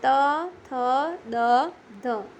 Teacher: જે વર્ણોનું ઉચ્ચારણ કરવા માટે જીભ વડે ઉપલા દાંતનો સ્પર્શ કરવો પડે તે વર્ણોને દંત્ય વર્ણો કહે છે